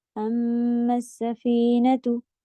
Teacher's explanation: سین میں سیٹی کی آواز دیں گی، میم پہ شدہ ہے، کھینچیں گے.